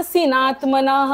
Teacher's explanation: शेवटचा विसर्ग पूर्ण बोलायचंय हा करून